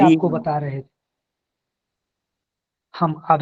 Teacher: री और र दोनों का उच्चारण स्थान मूर्धा ही है।